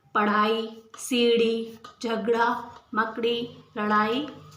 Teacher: इनका उच्चारण ड, ढ से भिन्न होता है। इन्हें उत्क्षिप्त व्यंजन भी कहते हैं। इन ध्वनियों से कोई शब्द आरंभ नहीं होता।